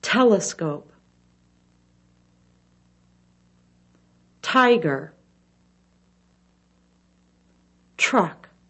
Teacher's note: the tip of the tongue touches the top of the mouth air is blown through quickly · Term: tea sound